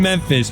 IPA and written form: ˈmɛmfɪs (Memphis)